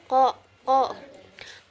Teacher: keluarnya itu huruf ini keluar dari langit-langit belakang. Cara keluarnya itu ee cara keluarnya itu berupa letupan ko kemudian posisi ee dalam pita suaranya itu mahmus tidak tidak bersuara qo tidak bersuara di dalam pita suaranya. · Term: huruf qof, qaf